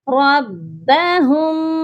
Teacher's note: را با زبر رب، با زبر با، رب، ہا میم پیش ہم، ربہم، اس میم پر غنہ ہوگا کیونکہ میم ساکن کے بعد با ہے